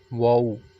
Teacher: वाउ जो है ये दोनों होंठों को गोल करने से अदा होता है। वाउ जो है होंठों को गोल करने से, हम वाउ को जब हमने पढ़ना होता है तो होंठों को हम गोल करेंगे तो ये हरूफ अदा होगा वाउ।